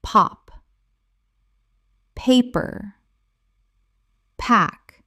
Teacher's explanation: When you say the P, you should feel a distinct puff of air hitting your skin. If you don't feel the air, you are not aspirating. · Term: aspiration